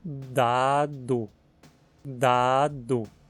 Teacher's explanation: em dado, as pregas vocais vibram durante a pronúncia do D também